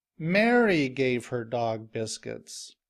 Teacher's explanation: her is pronounced longer, louder, and with a higher pitched voice.